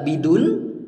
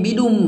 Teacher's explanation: ada tanwin bertemu dengan mim Apa hukum bacanya yaitu masuk dengan dengung